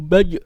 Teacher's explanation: Jim itu tidak boleh keluar desis. Usahakan dilatih jangan sampai keluar desis.